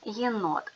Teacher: буква є позначає два звуки й е на початку слова і складу